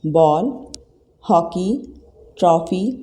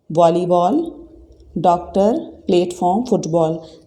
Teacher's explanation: इसकी साउंड औ जैसी है, लेकिन पूरी तरह से औ नहीं है, हल्का सा औ करके आता है, अ। जैसे बॉल, हॉकी, ट्रॉफी, तो औ नहीं है ये, इसको औ नहीं बोलेंगे। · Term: आगत स्वर औ